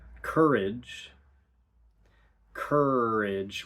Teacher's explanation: So we're on to number 13 in our dialect a lot of the times our R sound will color the entire vowel. So what I mean by that is in a word like courage, courage, we start, we almost start out with the R.